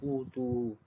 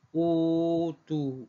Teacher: Warsh baca dengan 246. Semua qura' baca dengan 2 saja. Utu. Manakala Warsh baca dengan utu 246